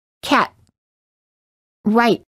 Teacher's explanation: do not release the T just let your tongue stay on top touching the gum Ridge with no air coming out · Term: held t